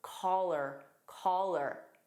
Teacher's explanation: in connected speech we can take call her and it becomes caller